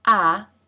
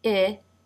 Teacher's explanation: in the first sound ah that the jaw is more dropped in the second sound I the tongue is more forward